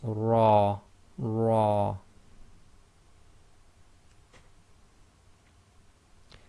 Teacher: the letter ra with fatha must be pronounced heavy